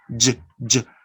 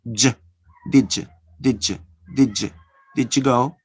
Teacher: You have two voice sounds, da and ya. So you connect and you produce the voice affricate sound.